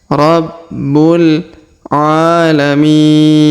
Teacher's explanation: Huruf mi kita panjangkan 2, 4, atau 6 harokat karena di depannya terdapat ya sukun sebelum huruf pemberhentian, dan huruf pemberhentian huruf na disukunkan atau dimatikan. · Huruf A kita panjangkan 2 harokat karena terdapat alif kecil di atasnya